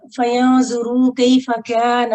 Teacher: फयंजुरू कैफ़ काना इस काफ को थिन पढ़ना है